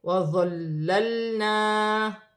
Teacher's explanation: لام مشدد ہے، ساکن لام کو مشدد لام کے ساتھ ملا کر پڑھا جائے گا